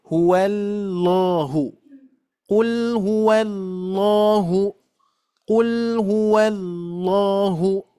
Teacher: Jadi tafkhimnya itu, tebalnya itu adalah ketika mengucapkan la-nya. Bukan dari wawu ke lam.